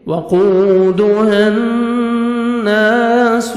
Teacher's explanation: وَقُودُهَا نون مشدد غنہ کریں گے، نوز میں ساؤنڈ لے کے جائیں گے، الف مدہ، نون کو 1 سیکنڈ کھینچیں گے۔